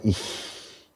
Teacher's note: Wir haben einen hohen Vokal in ich, und dieser hohe Vokal sorgt dafür, dass eben dieser Frikativ palatal wird und nicht velar ist.